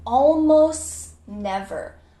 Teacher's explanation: after almost, there is a consonant, N, almost never. The T gets cut out.